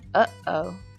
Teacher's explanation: The first sound in uh-oh is not a vowel but a catch in the throat.